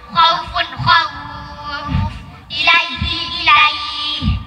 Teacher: dibaca waqaf, panjangnya 3 alif atau 6 harakat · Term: mad lin